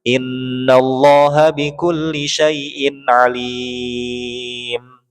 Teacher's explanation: Kalau kita mau berhenti di situ, maka otomatis alimnya jadi panjang.